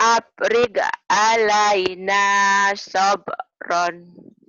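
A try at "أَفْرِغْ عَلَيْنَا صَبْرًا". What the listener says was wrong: Afril. Afril. G-nya kayak nu keselak. Afril alaina sabron.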